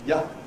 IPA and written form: jə (ya)